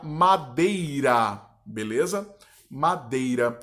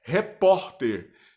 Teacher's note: uma sílaba tônica na penúltima sílaba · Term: paroxítonas